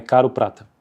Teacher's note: O R fraco sempre se manifesta em português como o TEP